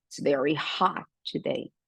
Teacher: esse hot é bem aberto mesmo, esse O de hot